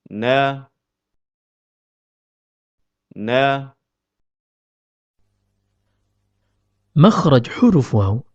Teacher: huruf nun keluar dari pertemuan antara ujung lidah dengan gusi bagian atas